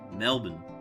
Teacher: Mel. The emphasis is is on the Mel.